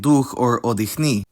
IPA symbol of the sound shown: x